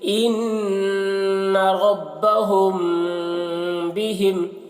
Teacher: دیکھیے نون میں غنہ بھی ہو رہا ہے کیونکہ یہاں پر نون مشدد ہے